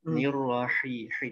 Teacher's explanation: Jangan ada suara keh, jangan ada kayak suara kho. Di tengah tenggorokan aja.